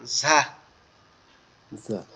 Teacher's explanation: সামনের যে নিচের দুইটা দাঁত, এই নিচের দুই দাঁতের আগার সঙ্গে লাগবে, লেগে আওয়াজ হবে এরকম ঝা।